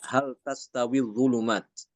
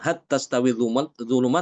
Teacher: Imam Hisyam di sini dia membaca dengan izhar ya padahal itu huruf ta Jadi dibacanya hal tastawi zulumat bukan hat tastawi zulumat tapi hal